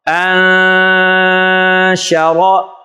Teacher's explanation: نون ساکن کے بعد شین حروف اخفا میں سے آ رہی ہے، اس لیے یہاں پر غنہ کیا جا رہا ہے